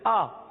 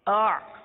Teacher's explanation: حمزہ حلق کے نیچے والے حصے سے ادا ہوتا ہے, آئین اس سے اوپر والے حصے سے ادا ہوتا ہے